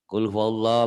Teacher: lafaz Allahnya dibaca tebal, tabkhim